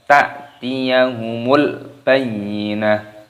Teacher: ketika waktu berhenti maka huruf yang paling belakang dimatikan karena disini tak marbutoh maka diganti dengan menjadi huruf H